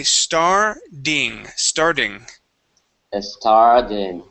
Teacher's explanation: when you add an ending on there like an ed or um an ing okay it makes that t turn into a d